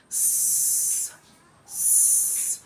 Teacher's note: it is oral because the sound is produced through the mouth and not through the nose and it is also called a fricative sound · it is an alveolar sound, which means that the sound is produced behind the teeth ridge and the hard palate. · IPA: [s]